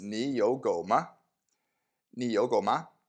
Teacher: two third tones remember that the first of them becomes like a second tone